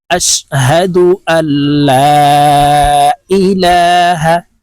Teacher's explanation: এই হামজাটি তাশদি ওয়ালা লামকে ধরবে মাঝখানে জজমওয়ালা নুন বাদ পড়ে যাবে